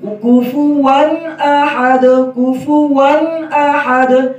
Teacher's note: ون میں غنہ نہ ہو، ون زیادہ لمبا نہ ہو، غنہ آنی ہوتا ہے تنوین میں.